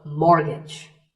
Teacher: It's the T. The first syllable is more and the second is gidge